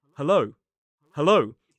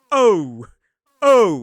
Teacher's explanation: So during this sound, the tongue actually moves. It moves from the middle to a bit more up. O. One big mistake that learners make is exaggerating that movement. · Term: dip thong o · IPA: əʊ